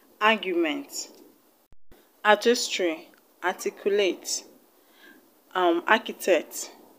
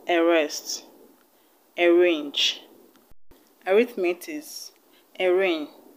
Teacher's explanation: The A is being pronounced as a schwa sound and the R is being pronounced differently from the A